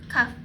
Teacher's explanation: kaf adanya di pangkal lidah. Infijari ada udara yang keluar sedikit.